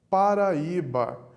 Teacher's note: nós temos quatro sílabas o assento está na penúltima sílaba